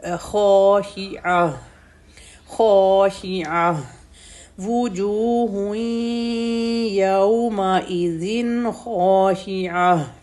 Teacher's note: عین ہے تو عین ساؤنڈ کلیئر کریں گے ہم، ایسے نہیں پڑھیں گے کہ عین اور یا دونوں ساؤنڈ مکس ہو جائیں ، پتہ نہیں چل رہا کہ پڑھنے والا یا پڑھ رہا